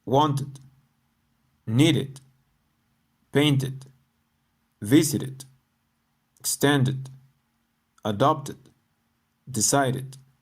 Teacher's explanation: The ed endings of these words are pronounced with a id sound because they end in t or d.